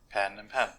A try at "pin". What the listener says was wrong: But I say pen and pin. They're both. They're both pen.